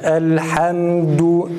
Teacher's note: dal harfini ötresini okurken dudağımızı öne doğru hafifçe uzatıyoruz